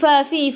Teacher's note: gigi atas menyentuh perut bibir bawah